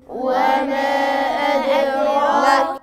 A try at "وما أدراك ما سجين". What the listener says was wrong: لا لا، احنا قلنا المد المنفصل في الرواية بتاعتنا احنا بنقصره على حركتين، ما اقولش وما لان ده منفصل. احنا المنفصل اللي هو حرف المد في كلمة والهمزة في كلمة في الرواية اللي بنقرأ بيها بنمد حركتين.